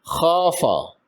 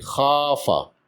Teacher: الف سے پہلے خا پر زبر ہے، اس کو برابر 2 حرکات لمبا کریں گے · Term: مد اصلی